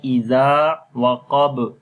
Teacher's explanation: On the Ba we make Qalqala, and that is strong Qalqala.